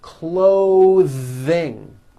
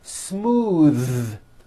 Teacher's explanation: at these voiced th sounds in the middle of words clothing notice how my tongue comes out in the middle of the word and the th sound is pushed Out